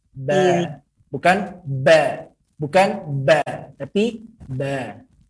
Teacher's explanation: Dari kedua bibir yang menempel. Namun tidak harus ditekan. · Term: huruf ba